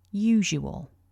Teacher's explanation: although we write the letter S, it's actually pronounced as a voiced j.